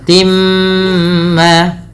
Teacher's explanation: Kemudian pada lafal timma ini merupakan bacaan idgham bighunah sehingga bunyi awalnya tin bertemu dengan mim. Suara tinnya masuk kepada huruf mim. Maka dihukumi dengan bacaan idgham bighunah dengan menahan bunyi suara mnya sepanjang dua harakat.